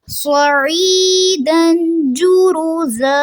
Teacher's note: سواد کو پر رکھیں گے، آئین پھر واضح رہنا چاہیے، اور یہاں پہ بھی مد اصلی ہو رہی ہے کیونکہ یا ساکن سے پہلے زیر آ رہی ہے.